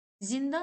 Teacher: Zindan sözünün tələffüzü eyni qalır və bu söz yalnız cingiltili samitlərdən ibarətdir